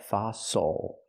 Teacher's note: use the open a sound like hot and stop for the O · not fossil but fossil the stress is on the first syllable the second syllable is not stress so it's oo like muscle and Castle fossil so we can use fossil as a name brand I